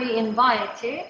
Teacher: In the word invite, the nasal sound can be labiodental nasal before the labiodental sound, V. F or V is labiodental sound.